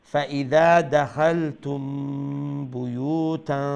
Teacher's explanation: মিম সাকিন আমরা মানে ইখফায়ে শাফাওয়ি কইবা, লাইট নেজাল সাউন্ড দিয়া